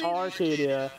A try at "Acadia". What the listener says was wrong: There's no R.